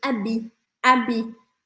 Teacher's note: também não pronunciamos o h no começo da palavra